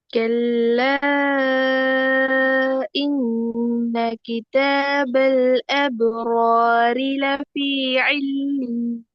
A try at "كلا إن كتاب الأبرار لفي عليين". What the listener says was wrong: கடைசி சாங் கொஞ்சம் ராகம் எடுத்து வருங்க. கடைசி எல்லாம் போற மாதிரி விளங்குது ராகம். لفي عليين.